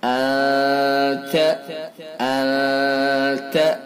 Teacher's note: وَأَنْتَ حِلٌّ بِهَذَا الْبَلَدِ، أَنْتَ نون ساکن کے بعد تا ہے جو اخفا کے حروف میں سے، لہذا اخفا ہوگا، اخفاء حقیقی، یہ والا اخفاء حقیقی ہوگا۔ انت یعنی ناک کے واسطے سے خیشیوم سے نکال کر کے ادا کریں گے، 1 الف کے برابر ناک میں رکیں گے